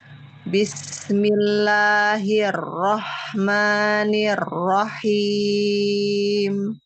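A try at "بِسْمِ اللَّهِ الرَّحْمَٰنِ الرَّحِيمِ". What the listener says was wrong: Luruskan lagi kasrohnya pada hir, nir, sama him. Dan hair, Mir, him.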